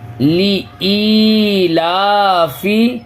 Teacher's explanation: اس کو مجہول نہیں پڑھیں گے، لی اے لا فے نہیں پڑھیں گے